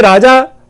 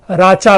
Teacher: ज जो है वो च, ज घोष है, च अघोष है, प्रथम वर्ण है, तो ये राचा, पैशाची में राचा।